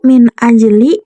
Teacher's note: nun mati bertemu alif, hukumnya idhar, dibaca jelas.